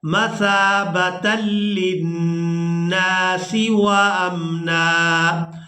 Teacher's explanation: وقف کریں گے تو وقف کی صورت میں ہم نے نون پر ایک زبر ادا کرنی ہے اور اس کو ایک الف مقدار کھینچ کر ادا کرنا ہے